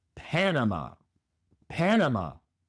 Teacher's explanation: Pero el acento va en la primera sílaba. En lugar de Panamá es Panama.